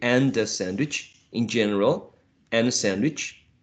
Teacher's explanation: speakers in general would elide the final d and would connect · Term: elision